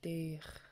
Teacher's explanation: In the word Deich for two, it needs to be a high tone E.